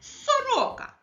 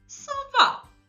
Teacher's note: перший звук с твердий приголосний